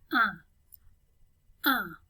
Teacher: 1 is a typical nasal vowel sound in French, so that means you're not going to pronounce the N, but the N kind of influences the way you pronounce the U.